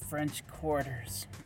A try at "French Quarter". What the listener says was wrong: Okay. Yes, not quarters. The French quarter.